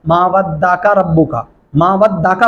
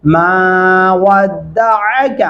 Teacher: आइन गले से अदा करेंगे